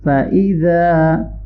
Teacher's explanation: حمزہ کو شارٹ پڑھیں گے، زال کو نرمی سے پڑھنا ہے اور الف مدہ کو لانگ کریں گے